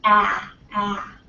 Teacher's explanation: now we're down here ah ah okay so it's really low your mouth is kind of more neutral it's not rounded your lips aren't rounded but it's very low so it's not smiling either and then we have a shorter